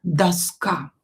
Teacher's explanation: Доска, same here, or not stressed, pronounce it as A. And this A is stressed here, not O.